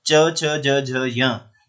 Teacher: च छ ज झ य, ये बोले जाते हैं तालु से